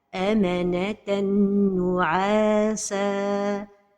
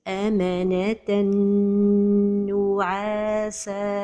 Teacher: The mistake is to pronounce it idgham without a time for the ghunnah.